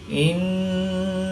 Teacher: نون مشدد میں ہمیشہ غنہ ہوتا ہے، تو یہاں پر ہم غنہ آنی کر کے پڑھیں گے